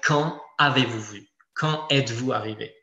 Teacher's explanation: Si on est dans une question, en général, et ça, il faut faire très attention avec les apprenants, il n'y a pas de liaison avec « quand » qui est suivi d'un verbe qui commence par une voyelle